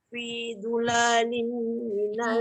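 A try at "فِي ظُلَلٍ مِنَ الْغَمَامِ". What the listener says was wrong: fi zulalim dengung. La pendek.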